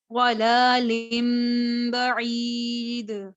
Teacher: लाम पर खड़ा ज़बर है तो एक अलिफ के बराबर खींचा